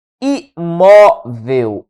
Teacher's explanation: A sílaba tônica é a penúltima sílaba, portanto é uma paroxítona